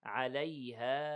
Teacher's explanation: we have 4 seconds. مد منفصل